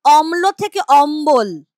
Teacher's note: এখানে ছিল ম প্লাস ল এখানে যেটা হয়ে গেছে ম প্লাস ব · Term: বশ্রুতি